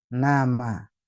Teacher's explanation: jadi Nun dan mim itu keluar dari dari dua tempat ya Ya dua-duanya keluar dari hidung tapi juga untuk Nun keluar dari lidah untuk mim juga keluar dari bibir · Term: keluar dari rongga hidung